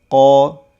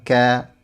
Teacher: huruf qaf makhrajnya agak ke dalam sedangkan kaf sedikit keluar walaupun dua-duanya masih berada di bagian pangkal lidah atau bagian lidah paling belakang.